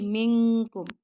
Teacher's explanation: جب نون ساکن کے بعد یہ والا کاف آتا ہے نا، لائٹ کاف، تو یہاں پہ لائٹ اخفا ہوتا ہے